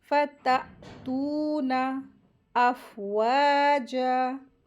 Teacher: वाव के साथ अलिफ मद आई है, इसको दो हरकत खींचेंगे और जीम के ऊपर भी क्या है, ज़बर है, लेकिन वफ़ की सूरत में अलिफ मद हो गई है, तो कैसे पढ़ेंगे, अफ़वाजा।